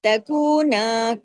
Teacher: ایک طرف واو مدہ ایک طرف الف مدہ، دونوں مدہ کے حروف برابر کھینچتے ہیں